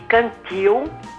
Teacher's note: A sílaba mais forte é a última da palavra. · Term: oxítonas